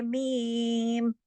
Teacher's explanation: اس میں آپ کے ہونٹوں کے باہر والے جو خشک حصے ہیں وہ آپس میں ٹکرا جائیں گے، یہ میم کا مخرج ہے۔